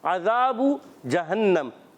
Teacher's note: عین کی ادائیگی حلق کے درمیان والے حصے سے ہوتی ہے، حرف حلقی میں سے ہے، عین اور ہا حلق کے درمیان والے حصے سے ادا ہوتے ہیں، عذاب جہنم۔